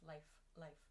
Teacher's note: air coming out of my mouth i'm not making any sound with my vocal chords